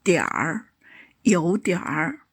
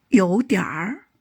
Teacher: Pay attention to the retroflex r ending in pronunciation.